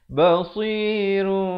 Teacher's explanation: Dia kena baca dengan 2 harakat, bibir dibiarkan renggang sedikit. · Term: Iqlab